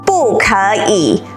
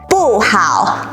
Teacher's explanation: Then here are examples for 不 plus anything that doesn't follow a fourth tone. Then you keep 不 in the fourth tone.